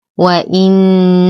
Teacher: نشد النون بغنة أكمل ما تكون